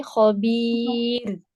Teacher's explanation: را کو ہیوی نہیں کریے، وقفاً لائٹ کریے